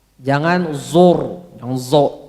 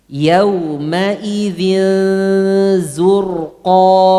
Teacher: Tipiskan zai sebelum ro tebal